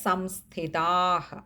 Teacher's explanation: അവിടെ ദീർഘവും ഉണ്ട് വിസർഗ്ഗവും ഉണ്ട് പകുതി ഹകാരത്തിൽ വായിക്കുകയും വേണം